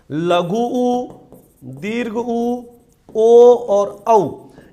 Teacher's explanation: होठों की बनावट वृत्त के समान गोल हो जाती है वृत्ताकार स्वर कहलाते हैं · इनको उच्चारित करके देखोगे तो इनके उच्चारण में होंठ गोल हो जाते हैं।